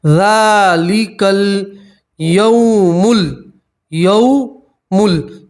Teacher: واولین کو کھینچتے نہیں ہیں, واولین کو جلدی سے پڑھتے ہیں اور نرمی سے پڑھتے ہیں · ذال کے اوپر کھڑا زبر, اس لیے آپ ایک الف کے برابر کھینچیں گے